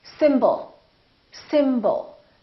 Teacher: the first syllable is stressed and the second syllable is reduced when we have a reduced vowel we don't pronounce it fully we don't say symbol we reduce it and we pronounce it